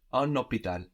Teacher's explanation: We have an obligatory liaison there between un and hôpital.